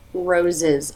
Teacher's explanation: teeth together for the Z sound then part slightly for the schwa and together again for the final Z sound